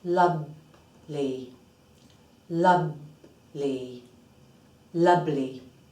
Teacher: we need the upper teeth to have a small or slight contact with the inside of the bottom lip the wet part of the bottom lip